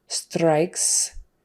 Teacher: she's using more like the tip of her tongue in the front of her mouth